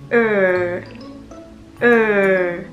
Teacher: 你发这个音的时候呢，会感觉到舌尖在稍微的往上翘